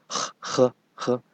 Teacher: In Chinese, this H is a little stronger than English H. Right? So h, it's a bit of a throw, right?